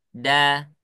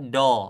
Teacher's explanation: Kemudian saya mengucapkan huruf dal, suaranya menjadi tipis. Da, tidak dibaca do, tidak.